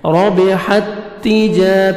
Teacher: سکون ہے، جزم ہے تو چھوڑ دینا ہے سکون والا لیٹر، جزم والا لیٹر ہم نہیں پڑھیں گے، حا کو ہم تا شد کے ساتھ ملائیں گے ، ربحت تجا، تا کو باریک پڑھیں گے، جیم الف مد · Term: ادغام